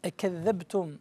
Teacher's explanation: قريب تمشي بها نحو الكسرة، حاول أن تفتحها جيدا. أكذبتم يبين الباء، افتحها جيدا.